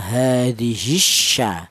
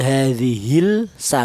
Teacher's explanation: lam matinya hilang dilebur ke huruf syin inilah yang namanya idgham. Idgham syamsiah.